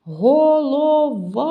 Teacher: наголос падає на звук а